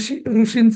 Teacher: इथे जस इथेच जीभ अशी दोनदा फडफडली पाहिजे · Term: ऋषींचा र